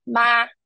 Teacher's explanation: Ma is a high and level pitch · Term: first tone